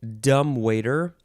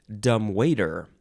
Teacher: you can emphasize, let's see, the first syllable, dumb waiter, or the second syllable, dumb waiter.